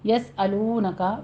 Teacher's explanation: سین پر حمز کریں گے سیٹی کی آواز کے ساتھ